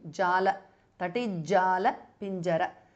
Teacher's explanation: the t changes to j because of sandhi.